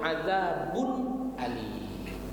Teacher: dijelaskan dia bunyi n, bunyi unnya itu adzabun alim, maka tidak boleh di situ didengungkan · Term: izhar